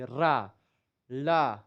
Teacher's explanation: जैसे कि आप देखते हैं रखे र बोलेंगे तो यहां पर जीभ आपके नाचते हुए जाकर के आगे के मसूड़े पर ऊपर वाले पर टच करेगी।